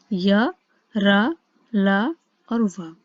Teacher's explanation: फिर सेकंड थे हमारे अंतःस्थ व्यंजन। ये वो व्यंजन होते हैं जिन्हें बोलने में हमें ऐसा लगे कि हमारे जीभ, तालु, दांत और ओठ परस्पर सटने वाले होते हैं, परंतु वो पूर्णतः टच नहीं होते। ये केवल 4 ही होते हैं, य, र, ल और व।